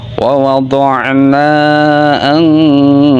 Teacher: Cara bacanya yaitu nun sukunnya harus disamarkan dan berdengung.